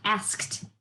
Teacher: That ED ending is saying the T sound